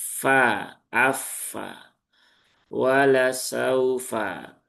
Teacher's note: Ujung dua gigi seri atasnya dia tidak nempel ke bibir bawah bagian dalam. Padahal huruf fa itu tempat keluarnya adalah ujung dua gigi seri atas, gitu ya, bertemu dengan bibir bawah, tapi yang sini, yang bagian dalam